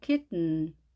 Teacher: T 발음을 하지 않고 코로 내보내서 발음합니다.